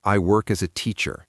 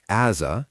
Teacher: Here as a often sounds like as a because the s links to the a teacher has a longer e sound and then that soft sound.